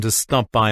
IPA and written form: tuː stɒp baɪ (to stop by)